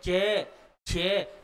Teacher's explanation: शवास वायु है ना स्पर्श करेगी लेकिन घर्षण करेगी जी ऊपर लवे में चिपक जाएगी और जीभ आगे सकेगी थोड़ा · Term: स्पर्श संघर्षी